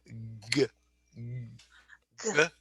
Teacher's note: I'm using my larynx, so I'm using my voice. So those are voiced sounds.